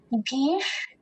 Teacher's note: जो मूर्धन्य शकार है उसका उच्चारण हम तालव्य शकार से थोड़ा अलग करें। भीष, इसका उच्चारण हम मूर्धा से करेंगे।